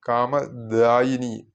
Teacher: ചൊല്ലുമ്പോൾ ശ്രദ്ധിക്കേണ്ടത് കാമധായിനി എന്നൊന്നും ചൊല്ലി പോകരുത് അക്ഷരസ്പുടതക്ക് വേണ്ടി കാമാക്ഷി കാമധായിനി അങ്ങനെയല്ല കാമദായിനി ദ അല്പപ്രാണനാണ് കാമദായിനി എന്ന് നീട്ടേണ്ടതാണ്